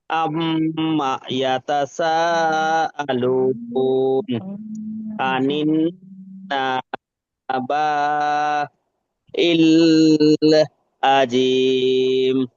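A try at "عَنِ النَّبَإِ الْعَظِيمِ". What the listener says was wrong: এই যে বাটা টান দিলেন, বাটা টান হবে না। আনিন নাবাইল আজিম, আনিন নাবাইল আজিম।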